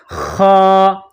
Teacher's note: جس طرح انسان گلے سے بلغم نکالتا ہے اس طرح خا کو نکالیں گے